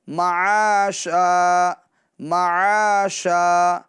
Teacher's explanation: جو زبان کا بیچ والا حصہ ہے اس کو اوپر بیچ تالو کے اندر لگائیں گے تو یہ شین ادا ہوگا